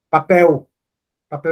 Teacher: Às vezes o l quando aparece sozinho no final da palavra ele tem som de u